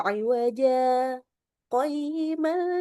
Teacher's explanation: Di sini wajan aslinya, jadi harus diwakaf dulu sejenak, harus saktah baru baca lanjut